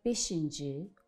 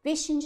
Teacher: Beşinci sözündə sözün kökündəki sait incədir.